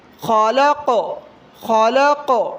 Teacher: قاف بھی حروف قلقلہ میں سے ہے، آخر میں حرکت دیں تھوڑی سی